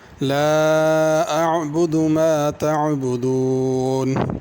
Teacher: آیت نمبر 2، 3، 4، 5 ہر آیت میں 2 دفعہ عین کا حرف ہے، تو اس کو عین کو صحیح ادا کرنا، حمزہ نہیں پڑھنا